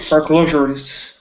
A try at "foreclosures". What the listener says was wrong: Good, exactly.